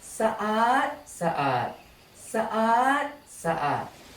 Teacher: Again, to apply the second tone rule, change the tone of the second syllable in the first word from low tone อาด to high tone อาด